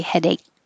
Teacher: And you don't have to say k at the end, headache. You can just say headache.